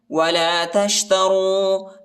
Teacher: را کو موٹا بھی پڑھنا ہے